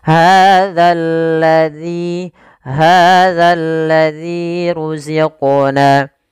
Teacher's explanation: Karena di sini setelahnya bertemu dengan alif lam syamsiyah sehingga langsung dimasukkan ke huruf tasydid. Kemudian hati-hati dalam melafalkan zal, jangan dibaca hazallazi, diganti dengan huruf zai, nanti merubah makna. Agar menyempurnakan daripada makhraj huruf zal, agar kita letakkan ujung lidah kita di gigi sari atas sehingga terbunyi dengan za yang sempurna makhraj dan sifatnya.